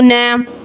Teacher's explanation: नून साकिन के बाद हमज़ा है यानी इजहार का कायदा है, गुन्ना नहीं करेंगे।